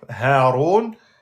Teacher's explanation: Le point de sortie est tout en bas de la gorge.